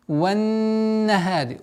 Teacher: Удержание в размере двух огласовок, за который следует звук ха